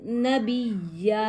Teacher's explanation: دو زبر کی تنوین کا وقف ایک زبر الف مدہ میں بدل جائے گا ، اور وقف بنے گا وقف بالابدال، اور حالت وقف میں